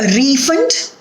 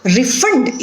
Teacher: in the first sentence the word refund is used as a noun and therefore the stress is on the first syllable that is re